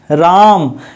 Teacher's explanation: पलुत स्वर जो होता है जिसको बोलने में सबसे ज्यादा समय लगे, ठीक है, यानी कि थोड़ा सा बढ़ा के बोले। जैसे बोलना हो राम, ठीक है, राम, यानी कि राम को थोड़ा लंबा खींच करके राम बोलना है तो बड़ा हो गया।